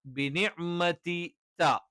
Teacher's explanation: നാവിന്റെ അറ്റം 2 മുൻപല്ലുകളുടെ മോണയോട് ചേരുന്ന ഭാഗത്ത് വെച്ചുകൊണ്ടാണ്